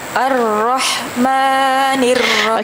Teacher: ketika bunyi Ar tu dia dah Terus tebal kerana kita bersabdu dengan ra yang tebal ketika tu dah tebal dah jangan jangan nipiskan lagi arahmanir ni